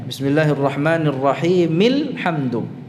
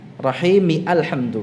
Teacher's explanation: Hamzah wasal itu gugur ya pada saat disambung dengan kata sebelumnya ya.